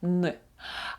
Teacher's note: вимовляється язиком передньою частиною язика яка стоїть за задньою частиною верхніх зубів